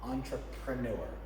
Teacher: It's a very light, quiet R.